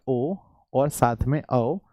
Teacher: ये कंठ और ओष्ठ दोनों है, इसलिए हम इसे कंठोष्ठ कहेंगे। कंठोष्ठ यानी कंठ और प्लस ओष्ठ, कंठ और प्लस ओष्ठ बराबर, तो हम इसे कंठोष्ठ कहेंगे।